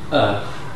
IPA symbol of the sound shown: θ